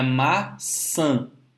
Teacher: Se você colocar o seu dedinho embaixo do nariz e falar maçã, você vai ver que parte do ar sai pelo nariz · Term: sílaba nasal